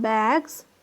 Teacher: But in bags, we see that the influence of the voice sound g sound, bag, g is a voiced sound. So the plural is manifested as z. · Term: progressive assimilation